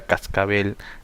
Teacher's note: En la palabra cascabel, la mayor fuerza de voz vendría a ser en bel.